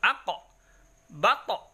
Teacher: Kalau kita waqaf pada huruf qaf dan to, maka kembalikan sebagaimana bunyi konsonan vokal o, jangan e. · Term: qalqalah